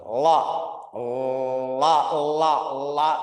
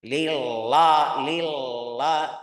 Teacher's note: orang Indonesia tebal la la la karena lidahnya lurus lillah lillah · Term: lam yang lurus